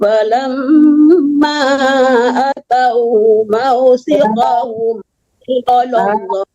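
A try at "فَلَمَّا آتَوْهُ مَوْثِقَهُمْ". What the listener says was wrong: Ya, A-nya panjang.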